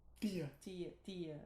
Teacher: pronunciaria com esse t e d africado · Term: consoante africada